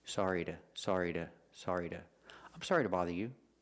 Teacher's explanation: Because the word to is not stressed, you have the sound, the short sound. And because the T in to is between vowels, it changes to a fast D